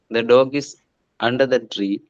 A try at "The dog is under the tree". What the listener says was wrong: Yeah, that's also correct.